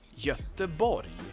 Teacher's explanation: We have no G sound there. It's not. It's like a Y. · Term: Y sounds